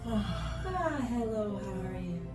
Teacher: If you use a voice like this, the vocal cords, they vibrate, but they don't touch so hard. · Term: breathiness